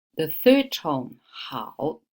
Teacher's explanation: this one is the third tone 好 down and up. So we don't change the pronunciation.